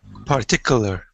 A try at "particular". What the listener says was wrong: Don't say part. Say just particular. Yeah, because sometimes we can see another word inside a long word. For example, here I can see part, but it's not particular. It's more like particular. Particular. Particular.